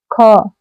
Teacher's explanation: अघोष और महाप्राण ध्वनि है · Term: अघोष महाप्राण ध्वनि